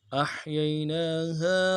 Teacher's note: أحييناها میں حمزہ کو حا کے ساتھ ملانا ہے، حا میں آواز جاری رہے گی۔ یہی میں دو یا ہیں، یا لین ہیں، بغیر کھینچے پڑھیں گے، اور نون کے بعد کھڑا زبر ہے، اس کو ایک الف دال میں کھینچیں گے۔